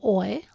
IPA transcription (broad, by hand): ɔɪ